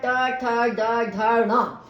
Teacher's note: जीभ तालु के पिछले भाग पर, मतलब जो हमारा तालु है उसके पीछे के भाग पर जब हमारी जीभ टकराती है तो वहां पर हमारा मूर्धन्य होता है। जैसे टवर्ग का ट ठ ड ढ ण, और इसी से बने हुए दोनों उत्क्षिप्त वर्ण भी हमारे, तो ये सब हमारे तालव्य इसमें आ गए मूर्धन्य में।